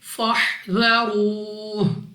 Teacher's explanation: اس کے بعد ہے را کے اوپر پیش تو را کو پر پڑھتے ہیں یعنی موٹا، منہ اور آواز کو کھول کر